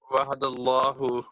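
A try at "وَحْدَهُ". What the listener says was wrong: नहीं वहद नहीं है, वहद नहीं है ये, वहदा, ये वहदा, वहदा, वहदल्लाहु,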